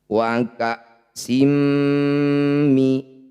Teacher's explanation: Wa ka'sim mi, kasrah tanwin bertemu mim disebut bacaan idgham bi gunnah. Bunyi kasrah tanwinnya masukkan mim, rapatkan bibir, dengungkan 2 harokat.